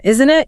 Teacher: how the intonation drops slightly at the end of that tag question. Isn't it? You aren't genuinely asking a question.